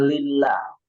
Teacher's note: Lillah itu dibacanya tipis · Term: tarqiq